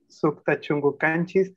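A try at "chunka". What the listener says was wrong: Creo que estaba diciendo chungu. Chunga sería.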